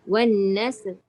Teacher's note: Lidah tak payah keluar. Sin tu dia kena ada sifat sofir ataupun berdesir.